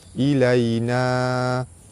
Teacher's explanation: Pada atas bertemu dengan ya di tengah kalimah, hukum dia mad lin, dibaca lembut serta panjang 2 harakat.